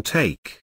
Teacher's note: the lips are not rounded they are relaxed the tongue is tense and moves from the mid High to high position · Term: American a